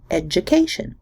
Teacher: the D and the Y sound form a single affricate J in education, and the T and the Y form the single fricative Sh, education.